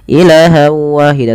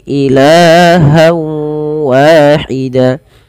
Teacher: Pada lafal ilah di sini kita panjangkan la-nya sepanjang 2 harokat karena ia ada mad tabi'i. Fathah bertemu dengan alif, jangan dipendekkan ya teman-teman.